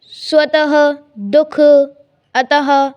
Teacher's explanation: इसका उच्चारण ह की तरह होता है, जो आधा ह होता है उसकी तरह होता है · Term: विसर्ग